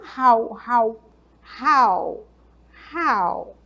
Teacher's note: quando você for falar esse how, esse H é como se fosse um som de R mesmo